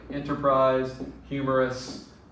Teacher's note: it is stress unstress unstress and we call those verses dactylic · it is dum-dada, stress, unstress, unstress